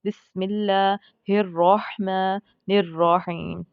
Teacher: ہم نے ان دونوں الرحمن اور الرحیم کے را کو پر پڑھنا ہے، کیونکہ را کے اوپر مشدد بھی، را مشدد بھی ہے اور را کے اوپر زبر ہوتا ہے، اس کو کہتے ہیں فتحہ، تو ہمیں کیا کرنا ہے؟